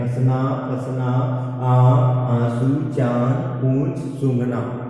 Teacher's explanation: जिनके उच्चारण में नासिका और मुंह दोनों का प्रयोग किए जाते हैं, उन अक्षरों के ऊपर में चंद्र बिंदु लगाया जाता है।